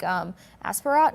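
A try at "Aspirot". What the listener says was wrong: Yeah, I think the T is silent because he's French. So Aspiro, yes.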